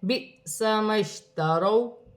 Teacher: واو ساکن سے پہلے زبر ہے، واو لین بن رہی ہے، اسے کھینچا نہیں جائے گا